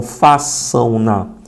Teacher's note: Nesse caso é ditongo nasal, porque é pronunciado pela narina.